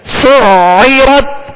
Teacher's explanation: عین کو وسط حلق سے ادا کرنا ہے